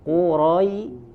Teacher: ya-nya tidak terbawa menjadi tebal. Tipiskan, ya, rahangnya diturunkan.